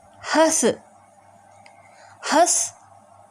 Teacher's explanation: होता इसका उच्चारण अनुसार के पिछडा था हल्का होता है और इसका उच्चारण करते समय हवा नाक और मुंह दोनों से निकलती है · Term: अनुनासिक